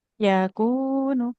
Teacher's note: Kafnya panjang. Kaf berharokat dhammah bertemu dengan wawu panjang dua harokat.